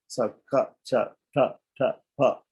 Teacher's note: the first member is unaspirated, means there's less air. Less air comes out of our mouth when we say them.